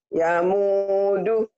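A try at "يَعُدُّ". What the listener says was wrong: Mana yamu ini ya, kalau ini ain, ini ain Bu, bukan nun ya. Ya u ain. Ya udu. Ya udu.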